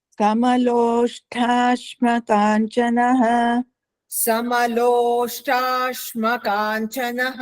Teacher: ಲೋಷ್ಟ ಅನ್ನೋದರಲ್ಲಿ ಮಹಾಪ್ರಾಣ ಇಲ್ಲ ಅಲ್ಪಪ್ರಾಣ